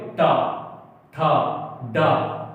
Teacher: जीभ आप देखेंगे 90 डिग्री ऊपर पर जाती है